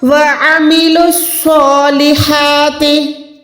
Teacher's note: مل جائے گا کیونکہ صاد یہ شد والا ہے، مشدد ہے، صاد موٹا حروف ہے، اس کی ادائیگی کرتے ہوئے آپ نے وسل ساؤنڈ پہ نکالنی ہے، منہ کو گولائی بھی کرنا ہے ، ہا کو آپ نے حلق کے درمیان سے ادا کرنا